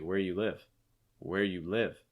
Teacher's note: the u is reduced and the where is stressed a little bit but live is your heaviest dress where you live have you · A lot of times what's happening is you're actually chopping off that do.